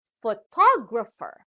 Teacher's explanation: to our second example the next word has four syllables and the stress is given to the second syllable this time so it is pronounced as photographer